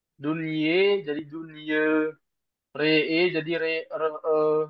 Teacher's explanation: falamma re e re e Imal suugro atau taklil artinya adalah membacanya antara fathah dan kasr tapi lebih condong ke fathah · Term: imala sugro